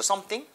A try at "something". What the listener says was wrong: 지금 두 번째 할 때 thing으로 가는 거, something이 아니라 윗니와 아랫니 사이에 혀를 살짝 걸치듯이, 오케이? something보다는 차라리, 뭐가 더 낫다? 차라리 그게 더 낫습니다, 오케이?